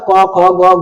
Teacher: क जब बोलिएगा तो अ की ध्वनि आता है लास्ट में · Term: व्यंजन वर्ण